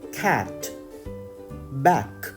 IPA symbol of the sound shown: k